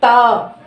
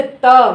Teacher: यानी कि दांतों को छूते हुए जो वर्ण निकलता है वो दंत है।